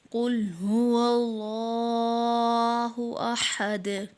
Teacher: پیش کو وقف میں ساکن کر دیں گے تو دال میں قلقلہ کریں گے